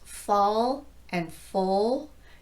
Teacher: your tongue is already low in the mouth for the vowel so there's no transition needed to get into the dark l